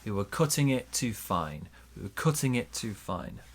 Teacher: Bigger stress on fine, smaller stress on cut.